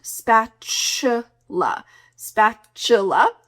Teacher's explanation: Make sure that the middle of this word has a nice ch sound.